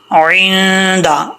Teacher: आइन को क्लियर करना है, हमज़ा नहीं निकालना